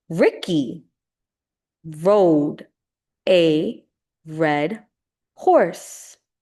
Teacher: But in American English, the R sound is more like a vowel. No parts of the mouth touch each other.